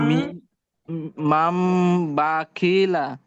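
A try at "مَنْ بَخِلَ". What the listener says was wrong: এই তো সুন্দর হয়েছে মাশাআল্লাহ, মাম বাখিলা, আবার বলেন।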